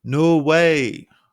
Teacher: holding no at the same pitch before finishing the sentence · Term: held pitch